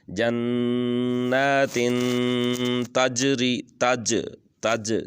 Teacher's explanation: جیم کو واضح کر کے پڑھنا ہے، جیسے کوئی چیز آواز ٹکرا کے آتی ہے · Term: قلقلہ